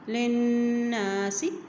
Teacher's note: ما بیناہ، ما بیناہ للناس، لام کی زیر کو نون کے ساتھ ملائیں گے، نون کے اوپر شد ہے، اور جب نون کے اوپر شد آ جاتا ہے تو وہاں پر غنہ ادا کیا جاتا ہے